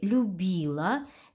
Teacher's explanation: в слове любила все согласные звонкие